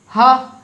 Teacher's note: हा बोलने पे बिल्कुल डायरेक्टली ऐसा लग रहा है कि अंदर से हवा बाहर जा रही है और कुछ नहीं हो रहा है।